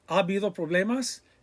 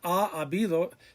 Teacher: And again, it's not ha habido. The a and a, they run together.